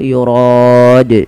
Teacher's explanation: lafal dal ini wajib dipantulkan karena dia dalnya menjadi dal yang sukun atau dinamakan dengan bacaan qalqalah.